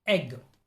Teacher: body of the tongue is in the middle of the mouth the tongue is positioned midway between close and open vowel sounds the jaw drops little and the mouth is also open a